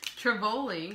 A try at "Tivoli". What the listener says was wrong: It's not, there's not an R after that. It's just T-I. Tivoli.